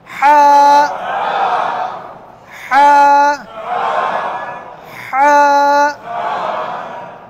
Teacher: ভেতরের যে গলার কণ্ঠনালীটা, এটা গলার পেছন সাইডে একটু চাপ দিয়ে হা বলেন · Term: হায়ের উচ্চারণ